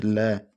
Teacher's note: वह व्यंजन जिनके उच्चारण में जिह्वा मसूड़ों को छूती है और हवा का प्रमुख वेग जिह्वा के आसपास या अगल बगल से निकल जाता है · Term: पार्श्विक व्यंजन